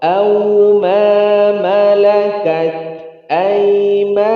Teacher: Au tapi tidak tebal, ya, tidak tebal, dia rokhawah.